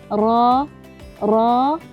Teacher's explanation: Getaran halus pada hujung lidah kesan daripada laluan yang sempit. [muzik] Pembaca perlu berjaga-jaga agar tidak berlebihan dalam menggetarkan lidah yang menyebabkan [muzik] penambahan bilangan huruf ra. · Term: Takrir, sifat at-takrir